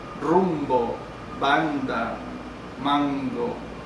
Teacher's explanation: todos estos sonidos son oclusivos, afectados obviamente por la nasal que la preside · Entonces se forman oclusivas si están acompañadas de una nasal, porque si no pueden ser fricativas.